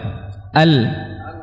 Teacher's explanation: rapatnya lidah ini menghalangi suara tadinya dia mau keluar lurus ya Al tidak bisa akhirnya dia mencari jalan mencari celah dari kanan dan kiri lidah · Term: sifat inhirf